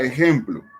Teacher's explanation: Tenemos la palabra ejemplo, tiene 2 sílabas. La fuerza tónica va en ejem